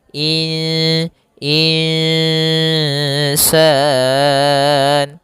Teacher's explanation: Maka kemudian di sini insan ada nun sukun bertemu dengan alif maka maaf ada nun sukun bertemu dengan huruf sin maka kita namakan dengan bacaan ikhfa. Yaitu secara membacanya itu nunnya kita samarkan kepada huruf sin.